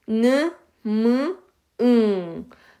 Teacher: 느, 무, 응 할 때 코가 살짝씩 떨리는 것을 알 수가 있어요. 공기가 나가는 부분이 달라서 그렇습니다. · 이 비음은 폐에서 나온 공기의 대부분을 코로 내보내면서 나는 소리입니다. 느, 무, 응. 자, 느, 무, 응 할 때 코가 살짝씩 떨리는 것을 알 수가 있어요.